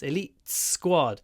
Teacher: you can hear the T but it's connected to the S